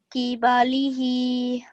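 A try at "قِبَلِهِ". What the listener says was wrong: Okay, remember this is a thick sound, so qi, qibalihi.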